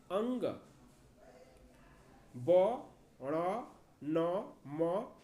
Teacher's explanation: इसके उच्चारण स्थान मुख और नाक हैं, इसलिए इन्हें अनुनासिक वर्ण भी कहते हैं।